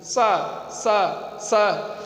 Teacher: जीभ जब दांत की ओर जाती है, सा सा सा, तब दंत सा का उच्चारण होता है।